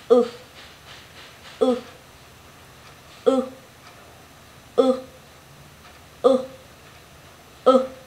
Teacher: Môi của mình hơi tròn và đưa ra. Lưỡi của mình vẫn đưa lên cao và lùi về sau. Và mình phát âm ngắn hơi thôi. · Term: âm u ngắn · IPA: /ʊ/